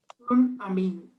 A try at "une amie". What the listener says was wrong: Une amie. Très bien.